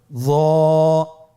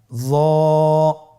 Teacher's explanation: একটু মোটা করে বলতে হবে। হরফটি হলো মোটা হরফ, বারিক করে পড়া যাবে না এবং হরফটি উচ্চারণ করার সময় অবশ্যই 1 আলিফ টেনে পড়তে হবে। · জিহ্বার আগা, সামনের উপরের 2 দাঁতের আগার সঙ্গে লাগিয়ে উচ্চারিত।